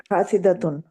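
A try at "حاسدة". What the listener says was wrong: یعنی کہ آپ نے تے سے پیچھے دال کو زبر دی، ہا الف سے پتہ ہے زبر ہے، اور یہ جو شیپ ہے فائل کی، اس کا جو بیچ والا لیٹر ہوتا ہے وہ زیر والا ہوتا ہے.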